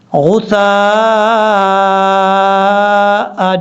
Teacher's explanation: الف کے اوپر مد ہے، اس مد کو مد متصل کہا جاتا ہے، 2.5 الف کے برابر آپ نے لمبا کرنا ہے اس کو